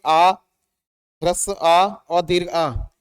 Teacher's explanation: ये दोनों कहलाते हैं आपके ये कंठ से बोले जाएंगे, कंठ वर्ण कहलाते हैं इन्हें, या कंठस्थ कह सकते हैं।